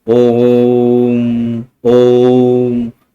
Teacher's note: तो यहाँ जो ओम बोल रहे हैं, ओ बोलने के बाद में और भी आगे तक ओ जा रहा है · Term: प्लुत स्वर